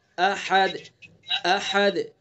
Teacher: حمزہ کو آخری سینے کی طرف سے نکالیں گے اور ہا کو حلق کے بیچ سے نکالیں گے. تو اس لیے دونوں کے اندر فرق کر کے پڑھیں گے.